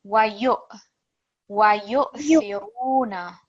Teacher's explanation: because we've got the sukoon on the hamza, we're just going to have a slight jerk on there.